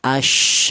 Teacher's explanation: sifat tafashi, yaitu ada suara tersebar · Kalau yang ada titiknya 3 ini berada di tengah lidah. Kalau yang ini di ujung lidah menyentuh pangkal gigi seri bawah ya.